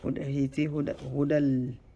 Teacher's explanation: Hudal, no nasalization, no nasal sound. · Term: idgham